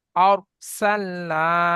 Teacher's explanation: আলিফের ডান দিকে জাবার আলি মাদ্দা, আলি মাদ্দাকে এক আলিফ পরিমাণ টান দিয়ে পড়তে হবে। যেমন আর সাল্লা, পড়েন।